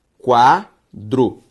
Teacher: A sílaba tônica de quadro é quá. E a sílaba tônica de quadro, que é quá, mostra que essa palavra é paroxítona.